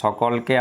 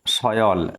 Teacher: স্বরমধ্যবর্তী একক ব্যঞ্জন অনেক ক্ষেত্রে লুপ্ত হয়ে গেছে। স্বরের মধ্যবর্তী অর্থাৎ দেখো সকলের দন্তস্বর পরে রয়েছে অ, আর এদিকে কয়ের পরে রয়েছে অ, তাহলে এই দুটোর মধ্যে রয়েছে ক, সেই কটা দেখো লুপ্ত হয়ে গেছে।